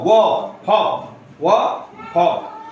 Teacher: दांत और ओष्ठ से बोला जाने वाला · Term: दंतोष्ठ